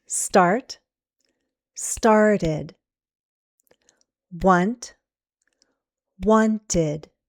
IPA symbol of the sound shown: ɪd